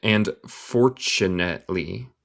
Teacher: otra vez el T suena como CH